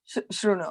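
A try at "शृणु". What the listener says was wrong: So it is not shruno, or it is not sruno. me pronounce it, sruno. sruno. this one, sa.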